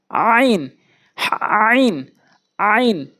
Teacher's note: ভর দিয়ে হলকের মাঝখান থেকে